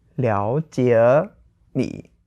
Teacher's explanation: So, like, second second third, because now those three are kind of together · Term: tone change